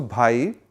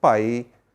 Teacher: if the first sound is voiced aspirate like b it becomes voiceless unaspirated. So bhi will be pronounced as pi.